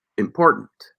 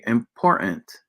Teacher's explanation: the unstressed syllable is getting worn away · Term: syllable loss